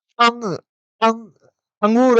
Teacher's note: यहाँ पे ऐसा लग रहा है कि नाक पे थोड़ा प्रेशर हो रहा है, कंपन हो रहा है। जबकि आप अस्वर को बोलेंगे तो इस प्रकार का क्या नहीं होगा, किसी प्रकार का आपको कंपन महसूस नहीं होगा।